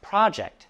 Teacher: As a noun, it means a task or assignment and is pronounced project stress on the first syllable